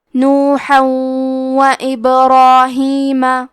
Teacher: ادغام کا معنی ہے حرف کو حرف میں داخل کرنا، تو ہم تنوین کو واو میں ملا کے غنہ اور تشدید کے ساتھ یہ حکم کو ادا کریں گے